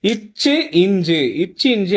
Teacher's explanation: நாவின் இடைப்பகுதி நடு அன்னத்தின் இடைப்பகுதியோடு பொருந்துவதால் பிறக்கிறது